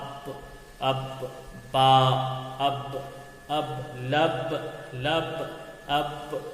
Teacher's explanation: با کو ادا کرتے وقت دونوں تری ہونٹ کو ملائیں گے